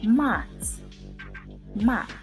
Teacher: notice how the soft sign softens the consonant T in mat